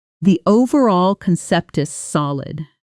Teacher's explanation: Try saying it that way, emphasizing overall and solid, letting the middle words move quickly and lightly